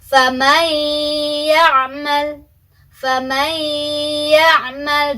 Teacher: Kita tidak lagi membaca nunnya, tapi kita langsung masukkan nun sukunnya ke dalam huruf ya. Jadi kita bacanya faman ya'mal, dan dengungannya tadi kan harus dengan dengungannya ditahan 2 ketukan. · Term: idgham bi gunnah